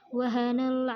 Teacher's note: alif lam qamariyah atau izhar qamariyah, dibaca jelas karena alif lam bertemu ain